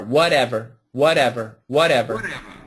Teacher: and then it's a flap T